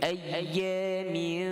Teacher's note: Lidah kita angkat, 2 harakat kita dengung gunnah. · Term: ikhfa haqiqi